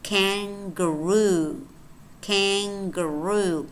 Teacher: what's happening here is that the n is becoming more like the g